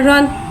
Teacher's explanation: रॉ के ऊपर 2 ज़बर यानी कि तनवीन है, 2 ज़बर की तनवीन को मुँह खोल के अदा करके पढ़ेंगे और रॉ के ऊपर 2 ज़बर की तनवीन है, लिहाजा 2 ज़बर की तनवीन को मोटा अदा करके पढ़ेंगे